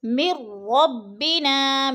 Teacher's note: میم کو را کے ساتھ ملا کے ہم نے ادغام کرنا ہے، درمیان میں نون ساکن کو نہیں پڑھنا